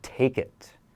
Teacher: you can think of combining that final consonant with the vowel. They link together, take it. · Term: linking